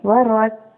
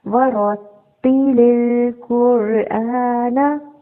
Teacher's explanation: وَرَتِّلِ الْقُرْآنَ، را زبر ہے، اس کو پر پڑھیں گے، را کے اوپر جب بھی زبر آتی ہے اس کو پر پڑھا جاتا ہے۔ آگے تا ہے، تا مشدد ہے تو را کو تا کے ساتھ ملائیں گے، وَرَتْ، اور تا زیر پھر تی پڑھیں گے، وَرَتِّلِ الْقُرْآنَ۔